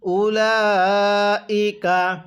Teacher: উলাইকা, এই লামের মধ্যে কিন্তু আমরা 4 আলিফ টান দিব।